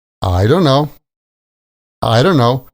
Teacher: The stress comes on the I, and the T sound at the end of don't gets dropped. Don't becomes don, and when you put that all together, you get I don't know.